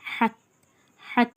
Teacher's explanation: எழுத்தோட பிறப்பிடமே தொண்டையோட அடிப்பகுதி கனமா ஓதணும் வயித்துக்கு கீழ இருந்து அடி வயித்துல இருந்து ஓதுற மாதிரி ஓதணும்னு நம்ம சொல்லி